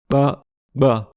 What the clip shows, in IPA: k͡p ɡ͡b